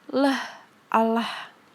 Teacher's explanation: Tempat artikulasinya di alveolar, punggung gigi. Cara artikulasinya aproksiman lateral. Udara berada di pinggir lidah.